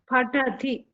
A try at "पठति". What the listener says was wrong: फ नास्ति प अस्ति प पठति प प लिप ओनली पश्यतु प